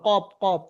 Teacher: জীভের গড়া তার বরাবর উপরের তালুর সাথে লাগিয়ে উচ্চারিত হয় কফ